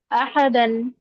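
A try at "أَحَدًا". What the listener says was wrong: হাটা আর একটু উচ্চারণ হবে, আহাদান।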